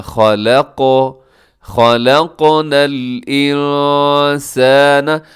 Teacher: یہاں نون ساکن کے بعد سین ہے تو یہاں اخفا کیجیے گا.